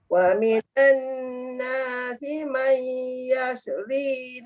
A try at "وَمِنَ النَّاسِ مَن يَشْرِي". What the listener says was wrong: Dia ada bunyi yashri. Dia jangan heretkan shin tu. Yashri.